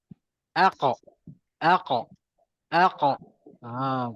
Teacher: makhraj dekat belakang, lidah tu naik je ke atas, terus lantunkan ke depan. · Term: huruf melantun